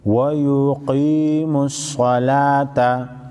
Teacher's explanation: قاف او صاد چې حروف مستعلیه کې دي غټ په ویل کېږي